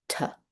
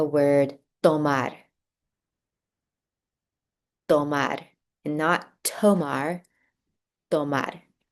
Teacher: T. But in Spanish, my tongue is flattening on the roof of my mouth and it's touching my two front teeth